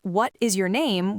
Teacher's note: If you say, What is your name? with a high rising pitch, you sound like you are incredibly shocked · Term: rising intonation